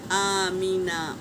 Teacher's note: اب دیکھو حمزہ کے اوپر کھڑا زبر ہے تو 1 الف کے مقدار کھینچیں گے، آمینہ، یہ الف مدہ ہے تو ہم اس کو 1 الف کے برابر کھینچ کے پڑھیں گے